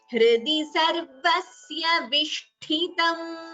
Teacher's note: Here Vishtitam is Mahaprana, so Tha should be chanted properly.